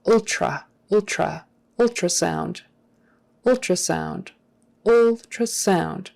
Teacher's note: because doing a proper t is a little trickier ultra ultra typically in regular conversation people will turn that t into a ch kind of a thing